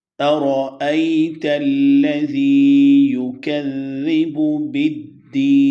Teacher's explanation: رو کو موٹا پڑھیں گے، بہت کلیئرٹی کے ساتھ، بڑی وضاحت اور تحقیق کے ساتھ حمزہ پڑھا جاتا ہے، اور یہ دونوں حمزہ ہیں، ایک الف کے انداز میں لکھا گیا ہے، دوسرا حمزہ کی صورت میں لکھا گیا ہے۔